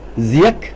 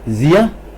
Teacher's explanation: ziak with high tone, right, zia with low tone, right. By the way, that zia, the H is really a glottal stop which Mizo conventionally uses for marking a glottal stop.